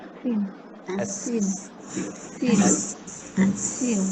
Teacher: hujung lidah berada di belakang gigi bawah. Tapi yang paling masyhurnya ialah hujung lidah berada di belakang gigi bawah. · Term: huruf sin